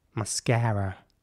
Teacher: in American English, it's mascara with an A sound and a quite rounded R towards the end